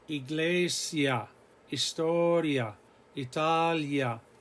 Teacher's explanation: The vowel, the I and the A here, they all run together. They glide. They produce one gliding sound, and they count as one vowel. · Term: diphthong